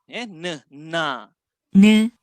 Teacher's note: dia ada angin yang keluar daripada hidung. Itu yang menyebabkan mudahnya kita menghasilkan bunyi N.